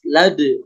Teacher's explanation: ini kan baladi ya ketika wasal Dibaca tapi kalau diwaakaf diberhentikan maka huruf Dal jadi memantul karena Dal posisinya di sini berada di akhir ayat maka ketika diwakafkan pada akhir ayat ini disebut qqalah Kubro pantulannya